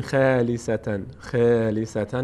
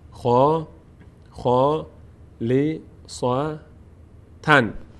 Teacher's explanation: بعدش حرف خا فتحه داره، بعدش الف قرار گرفته. خا از اون حروفی هست که پر خوانده میشه وقتی که فتحه داشته باشن و بعد اونها الف باشه. خا نمیگیم خالیستن، خالیستن نه، خا، خا لی صا تن.